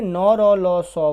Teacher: नौ, रौ, लौ, सौ वर्ण जो है वो वत्स्य ध्वनियाँ के अंतर्गत आते हैं